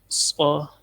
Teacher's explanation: اس کو نرمی سے پڑھنا ہے، حروف صفیریہ اس میں سے ہے، سیٹی کی آواز آئے گی